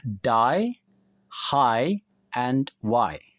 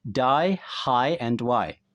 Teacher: I di sini mulai dari A, lalu kemudian ke I. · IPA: /aɪ/